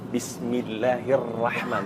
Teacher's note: Dikarenakan ra-nya itu dalam keadaan tasdid dan berharakat fathah, maka dia terhukumi mufakhamah, tebal.